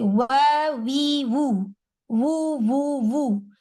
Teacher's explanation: دونوں lips round ہو رہے ہیں، وہاں سے آواز کا آغاز ادھر ہی سے ہو رہا ہے، اوریجنیشن ادھر ہی ہے.